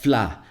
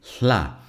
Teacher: But first of all, we have the lateral fricatives. In these consonants, the air is coming out of the sides of your tongue.